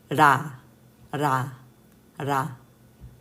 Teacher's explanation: You don't really roll the R. It's not exactly like L. It's not exactly like R. It's like in the middle.